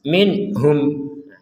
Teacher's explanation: Ada nun sukun bertemu ha, kita baca dengan jelas minhum.